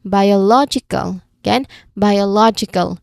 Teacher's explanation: so in biological the stress falls on law